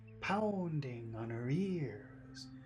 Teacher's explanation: big sound is pound because it's the accented syllable